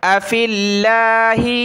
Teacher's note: لفظ اللہ کا باریک ہوگا کیونکہ فا پر زیر ہے